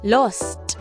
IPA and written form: lɒst (lost)